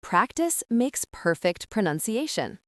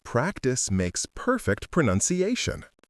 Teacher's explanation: I hear stress on practice. Perfect and pronunciation.